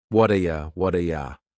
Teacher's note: That T at the end of the word what is going to change to a D sound.